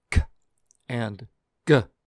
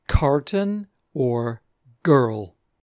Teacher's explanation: Moving over to the velar sounds, these are made towards the back of the mouth, over the softer palate, the sounds k and g